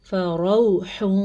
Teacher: را کو پر پڑھیں گے کیونکہ را پہ زبر ہے